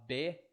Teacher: Você vê que o B, você fecha os lábios e depois abre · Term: labial